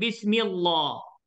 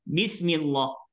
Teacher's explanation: Jadi masalahnya sini ialah bismi, mi berbaris kasrah. Maka jangan kita tebalkan. Dia kembali kepada sifat asal.